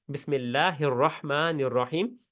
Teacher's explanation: را کے اوپر زبر ہے تو را موٹا ہو گیا